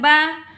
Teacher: مد اصلی ہے، اور ایک الف کی مقدار میں لمبا کریں گے، حروف شفوی میں سے ہے۔